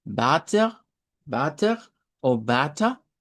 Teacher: tenemos la A como del español. La vamos a hacer como una A un poquito más larga